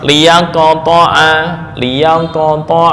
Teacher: maka sifat qalqalahnya lebih dekat ke bunyi fathah